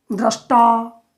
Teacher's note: तो ये मूर्धा से बोलेंगे, ये दंत से बोलेंगे, तो त को भी इसी के साथ जब बोलना चाहेंगे तो यह भी मूर्धा से उच्चरित होकर के ट बन जाता है।